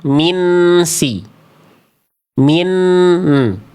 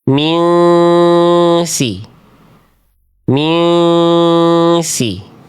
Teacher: Tapi karena dia ada ik hakiki bunyinya disamarkan, didengungkan selama dua harakat. Plus sambil juga harus bersiap-siap melafalkan huruf berikutnya. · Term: Ikhfa hakiki